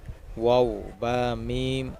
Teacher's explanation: ১৫ নম্বর মাখরাজ, দুই ঠোঁট হইতে ওয়াও বা মিম উচ্চারিত হয়